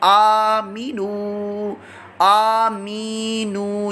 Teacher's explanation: बीच में जो मीम ज़ेर मी है इसको नहीं, बकिया सबको लंबा करेंगे।